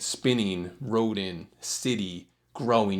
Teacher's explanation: you can hear the stresses like how the first syllable in those examples are stronger than the second